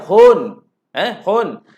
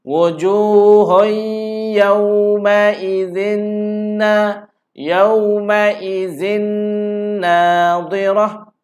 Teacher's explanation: maka kita kena masukkan tanwin hun itu ke dalam huruf ya. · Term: idgham